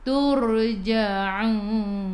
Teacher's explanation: Wa ilaihi turra, baca dengan tebal, ra baris sebelum ra ada baris atas, baris depan, turja'un. Daripada kerongkong, bukan daripada hidung.